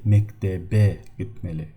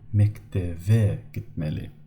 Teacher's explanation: P changes to the B. And B in the middle or at the end of the word, we do not read it as a B, we read it as a V.